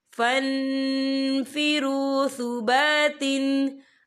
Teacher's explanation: या देखिए फन, यहाँ नून साकिन है, नून साकिन के बाद जो है फा आ रहा है, और फा जो है इक्फा का वर्ड है, तो हम यहाँ इक्फा करेंगे, नून साकिन की आवाज को नाक में छुपाएंगे